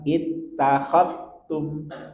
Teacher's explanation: Ketika za sukun bertemu dengan ta, maka langsung masukkan ke ta.